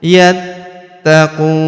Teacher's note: Huruf ta kita tahan dan kita tekan karena terdapat tanda tasdid di atasnya. Yattaquun. Huruf qu kita panjangkan 2, empat atau en harakat karena di depan huruf qu terdapat wau sukun sebelum huruf pemberhentian.